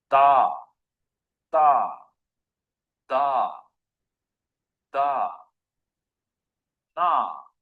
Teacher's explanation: With the dental, the tongue is touched on the tooth ridge, just behind the teeth.